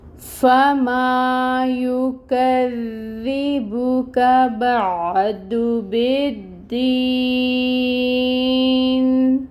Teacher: کاف کے اوپر فتح کی حرکت ہے، 1 کاؤنٹ ادائیگی ہوگی۔ کاف کو دال کے ساتھ ملائیں گے، تشدید ہے، ٹائم ٹیکنگ ہوگا دال پہ، اور دال کے نیچے کسرہ کی حرکت ہے جس کو 1 کاؤنٹ ادا کیا جائے گا۔